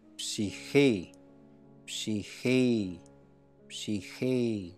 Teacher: Jadi tarik panjang sedikit, ditahan, dan nanti di akhir baru turun aksennya.